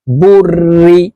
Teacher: চিহ্নটির নাম হলো তাসদিদ তো যেহেতু র এর উপরে তাসদিদ আছে এই রটি দুইবার উচ্চারণ হবে একবার পূর্বের হরকতের সঙ্গে আরেকবার নিজ হরকতের উচ্চারণ হবে তো বানানটি এইভাবে করব বা র পেশ বুর র জের রি